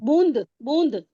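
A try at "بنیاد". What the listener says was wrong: नहीं नहीं, उसके ऊपर छोटी ए भी तो है नीचे, वो य की साउंड आएगी, फिर अलिफ आएगा, फिर दाल आएगा। बुनियाद। बे है, बे के ऊपर पेश है, नून है, बुन, फिर छोटी ए की दो नुक्ते हैं, अलिफ है, वो बना या, और फिर दाल है, बुनियाद, बुनियाद।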